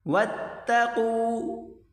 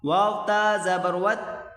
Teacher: واو کو تا کے ساتھ ملا کر پڑھیں گے. آگے الف نہیں پڑھا جائے گا